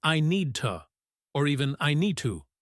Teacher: The D is swallowed. · the D in need connects to the T in to. And we might not hear a distinct D sound. It sounds like I need to or even I need to.